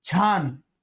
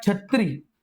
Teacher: आपण जर छ मित्रांनो बघितला तर छ हा जास्त करून ययुक्त उच्चारला जातो. छ हे जे आपलं वर्ण आहे ते तालव्य स्वरूपाचं जास्त करून उच्चारलं जातं, ते ययुक्त जास्त करून उच्चारलं जातं.